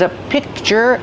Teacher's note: I don't release the C- sound. I just make the position and I stop the air.